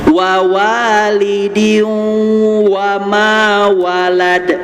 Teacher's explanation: diunya ditahan tiga ketukan juga sama seperti anta